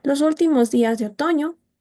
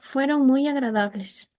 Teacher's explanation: También a partir de 2 grupos fónicos encontramos un ejemplo donde el primer grupo termina en un tono ascendente y segundo en un tono descendente